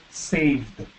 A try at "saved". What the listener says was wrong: Ajá, y la D un poco más fuerte al final.